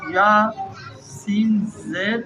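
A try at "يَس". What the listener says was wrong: نہیں زبر، یس،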